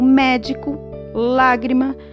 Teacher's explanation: as proparoxítonas que é a antepenúltima sílaba mais forte